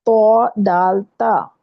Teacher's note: ان کا مخرج ہے زبان کی جو نوک ہے وہ اوپر سامنے کے جو دانت ہیں، 2 دانتوں کی جڑ کو لگتی ہے زبان کی نوک، تو اس وقت ادا ہوتا ہے تو دال تا.